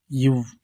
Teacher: மேல்வாய் பல்லை கீழ் உதடு பொருந்துவதனால் பிறக்கும் எழுத்து